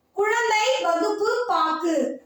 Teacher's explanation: ஆனால் கடைசினா இறுதியில், பாக்கு அந்த மாதிரி வரும்பொழுது, இறுதியில் வரும்பொழுது தன்னுடைய ஒரு மாத்திரை அளவில் இருந்து குறைந்து அரை மாத்திரை அளவாக ஒலிக்கிறது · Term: குற்றிய லுகரம்